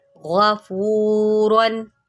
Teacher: غین کو موٹا کریں اور را کو بھی موٹا کریں